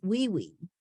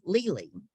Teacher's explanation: was to be called wee-wee but that's an articulation disorder okay to say the L like a w um was um is an articulation disorder